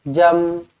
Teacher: Mim. Matikan mim mati di sini dengan jelas dan terang, iaitu hukum tajwidnya adalah izhar syafawi.